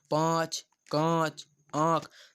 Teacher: मुख और नासिका से दोनों से उनका उच्चारण निकलता है तो उनको क्या बोलते हैं, अनुनासिक बोलते हैं